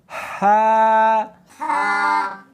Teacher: ہا نہیں پڑھنی بلکہ اس کو حلق میں سے نکالنا ہے، سینے میں سے نہیں نکالنا